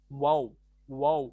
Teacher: होठों को गोल करना जरूरी है, बगैर होठों को गोल करे वाव नहीं निकलता